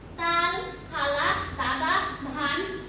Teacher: যেসব ব্যঞ্জনধ্বনি উচ্চারণের সময় জিভের ডগা উপরের পাটির দাঁতের লেগে বায়ুপথে বাধা সৃষ্টি করে সেগুলোকে দন্ত ব্যঞ্জন বর্ণ বলে।